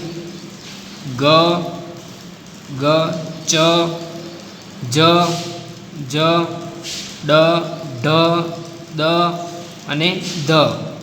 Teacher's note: જ્ઞાનતંત્રી સહેજ વધુ કંપનની અવસ્થામાં હોય ત્યારે જે ધ્વનિનું ઉત્પન્ન થાય તે ઘોષ ધ્વનિ